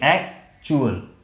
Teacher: जैसे यहाँ पे क्या है, इस पे मेन जो स्ट्रेस है वो एक्ट में है, चुअल में नहीं, इसलिए इसको हम जोर से बोलेंगे एक्चुअल।